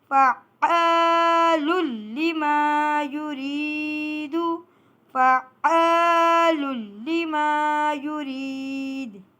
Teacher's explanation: دو پیش کی تنوین کو مشدد لام سے ملا رہے ہیں اور غنے کو ختم کر رہے ہیں، کیونکہ یہاں پر ادغام لام ہو رہا ہے۔